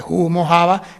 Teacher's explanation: la H aspirada, esa de humo, java, que decían todos los de Castilla. Y en Andalucía se mantiene.